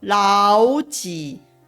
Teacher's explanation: 会听到的句子。这里的老跟几都是3声，这是正确的答案。然而 实际发音的时候，我们必须要发成2声跟3声的老几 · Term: 3声变调